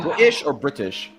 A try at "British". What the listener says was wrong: It's British. You pronounce the T's.